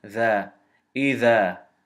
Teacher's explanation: Because this dal fatha is followed by an alif sukun, it extends to two movements. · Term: mad tabai